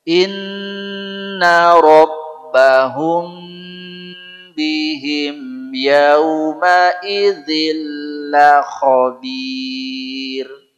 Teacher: Kalau ketemu ba namanya ikhfa syafawi. Ada gunnah. Tahan dulu, jangan tergesa-gesa.